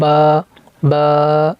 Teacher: दोनों होंठ आपस में मिलाएंगे तो ये बा अदा होगा।